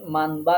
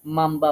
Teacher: গুন্না সহকারে নুন কে আমরা মিম দ্বারা পরিবর্তন করে পড়বো যদি তারপরে বা হরফ আসে · নুন সাকিনের পরে বা অক্ষর থাকায় এখানের উচ্চারণ মানবা না পড়ে গুন্না সহ আমরা মাম্বা পড়বো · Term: নুন সাকিনের ইকলাব, ইকলাব